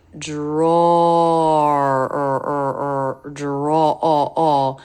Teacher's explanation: word because again it has two R sounds dra draw so it has the a as in law vowel which when it's followed by R draw draw is not as open the lips are more rounded and the tongue is may be